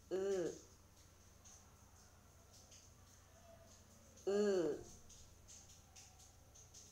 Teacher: 모음 으는 우처럼 혀가 입천장에 다을락말락하게 높게 하고 입술은 양옆으로 당기면서 평평하게 만들면서 소리를 냅니다.